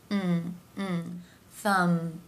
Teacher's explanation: the jaw drops to make that rule of mm and finally the M consonant sounds where the lips come together